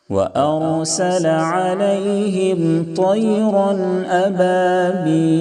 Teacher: تنوین میں غنہ نہیں کریں گے، تنوین کو ظاہر کر کے فوراً آگے بڑھ جائیں گے۔ وَأَرْسَلَ عَلَيْهِمْ طَيْرًا أَبَابِيلَ، طَيْرًا تو کو مکمل طور پر پر کریں یعنی موٹا کریں تاکہ تا سے نہ بدلے۔ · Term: اظہار حلقی